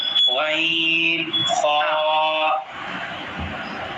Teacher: غین اور خا کا مخرج حلق کے اوپر والے حصے سے ادا ہوتے ہیں